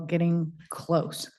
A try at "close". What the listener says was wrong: Close without the D. Without the D, not closed, but close.